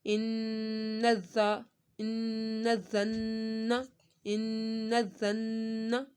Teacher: नून तशदीद है, नून पे गुन्ना होगा।